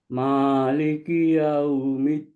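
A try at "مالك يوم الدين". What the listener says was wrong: Ditipiskan sedikit lagi. Ma. Jangan ma. Maliki yau.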